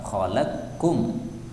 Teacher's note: ini qafnya boleh diidghamkan pada kaf. Khalaqkum, qafnya hilang ya, jadi kaf.